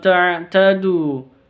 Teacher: an ta'tadu wa ta'awanu 'alal birri wat taqwa. Ta'tadu, nun sukun bertemu dengan ta, samar disertai dengan dengung.